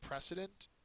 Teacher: First syllable is accented.